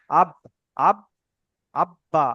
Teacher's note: ও ও দুটোকে একসঙ্গে ধরুন বা এখানে বলতে হবে বা যে যে দেখেন এখানে হরফে কলকলা পাঁচটি অক্ষর মধ্যে এখানে বা এসেছে, বা এর উপর সাকিন এসেছে, তাই বাকে মাখরাজের সঙ্গে ধাক্কা লেগে, মাখরাজের সঙ্গে ধাক্কা লেগে একটু আলাদা হয়ে যাবে।